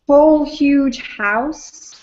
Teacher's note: whole huge house, for me, that's all stressed. 3 stresses in a row, and then it's followed by 2 unstressed, these blue ones here, in to explore.